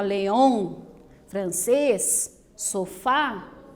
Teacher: Las palabras son agudas, pues tienen la última sílaba fuerte y son acentuadas porque león termina en N, francés termina en S y sofá termina en vocal.